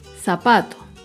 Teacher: Zapato se acentúa en la penúltima sílaba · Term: palabra grave